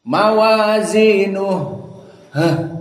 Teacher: Mawazinuh ha asakinah termasuk hams juga. Jadi ha-nya dikeluarkan nafasnya.